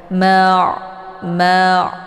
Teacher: ini merupakan huruf Ain yang letak posisinya adalah tenggorokan bagian tengah